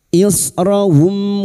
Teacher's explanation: mim sukun bertemu wau idhar syafawi mim sukun dibaca jelas tanpa mendengung